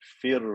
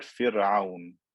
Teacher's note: the raw is vibrated more than once to create more than one r sound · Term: rolling r